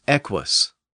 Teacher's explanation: the first U is often pronounced as a W or W sound, so it's equus.